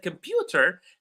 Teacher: the word pew is receiving all the stress